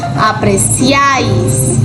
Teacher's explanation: Y por supuesto la mayor fuerza de voz debe recaer sobre la vocal abierta. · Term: triptongo